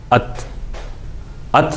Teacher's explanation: زبان کی نوک اگلے دانتوں کی جڑ میں جا کے لگی، ات ات بولتے ہوئے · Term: تے کا مخرج